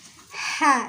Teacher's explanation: ha ini adanya di tengah tenggorokan ya. Ha. Jadi ini ha kecil, bukan he, tapi ha.